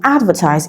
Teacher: The root word is advertise. It is stressed on the first syllable.